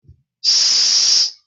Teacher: S continues, it's turbulent.